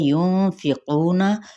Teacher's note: युनफिकूना नून पे इख्फ़ा हकीकी, क़ू पे मद्दे असली बिल वाव, और साथ ही ये क़ाफ हरूफ मुतआलिया में से है, तो इसको क्या करना है, हमने पुर पढ़ना है यानी तफ़ख़ीम के साथ